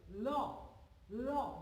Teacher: জিহ্বার অগ্রভাগ দাঁতকে স্পর্শ করে এবং দুপাশ দিয়ে হাওয়া নির্গত হয়। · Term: পার্শ্বিক ধ্বনি